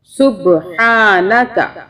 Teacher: اب دیکھیں یہاں پہ صبح ہا کے اوپر کھڑا زبر ہے، اس کو ہم تھوڑا سا الف کے برابر پڑھیں گے، کھینچیں گے